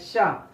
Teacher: अब तालव्य, जैसे हम चा बोलते थे, अगर उसी सीरीज में हम सा का प्रोनाउंसिएशन करने का प्रयास करें शा, तो आपको ऐसा लगेगा कि हल्की सीटी आ रही है